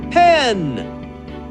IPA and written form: pen (Pen)